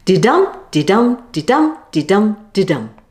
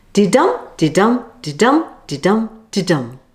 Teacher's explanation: a line of writing consisting of 10 syllables in a specific pattern of an unstressed syllable followed by a stressed syllable. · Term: iambic pentameter